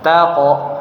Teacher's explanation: Kemudian yang keempat huruf qf dia dipantulkan